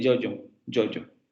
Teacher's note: el fonema palatal fricativo sonoro, como en yoyo